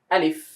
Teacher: আলিফটা হবে তাড়াতাড়ি, আলিফে কোনো টান নেই, আলিফ এভাবে।